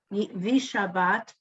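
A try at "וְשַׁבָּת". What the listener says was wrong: V. There's no E. It's 2 dots, which says you just hear like the sound of that letter.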